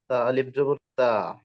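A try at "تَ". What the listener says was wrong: হুম, তালিফ কই এখানে? তা জবর তা। জি, তা এরকম না। তা টান হবে না, এক তা আইন হবে না। তা। জি, আবার এখানে একটু খেয়াল করবেন যে তা যেন আওয়াজটা একদম ছড়ায় না যায়। তা।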